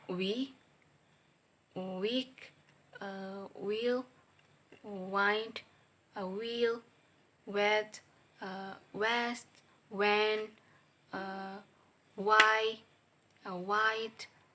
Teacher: voice labio velar approximate sound wa